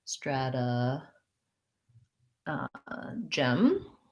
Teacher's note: we go back to our flap t and first syllable stress so again my strad like in strategy and then uh gem